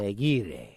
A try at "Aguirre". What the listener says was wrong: It's just Aguirre. You don't have to go all crazy and pronounce it like if you were Italian. It's just that his parents are Hispanic and their name is Aguirre.